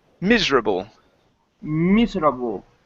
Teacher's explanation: the stress is at the very beginning